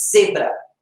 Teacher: Parece um Z, lembra sim o som do Z, só que a língua é entre os dentes. Para eu fazer o Z mesmo, de zebra, a minha língua fica atrás